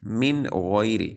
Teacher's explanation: نون ساکن کے بعد غین حروف حلقی میں سے ہے، تو یہاں پر اظہار ہو رہا ہے، یعنی غنہ نہیں کریں گے